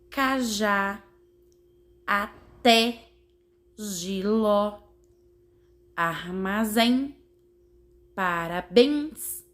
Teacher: a última sílaba da palavra tem um sonzinho mais forte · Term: oxítonas